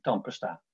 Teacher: die tweede A is onbeklemtoond en kan je dus ook als een schwa, als een U uitspreken